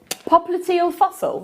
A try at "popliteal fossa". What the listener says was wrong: Fossa. Yeah, fossa, not fossil.